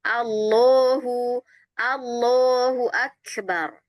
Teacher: Huruf lam dia huruf yang istifal tapi dia menjadi huruf yang tebal, tidak istifal ya.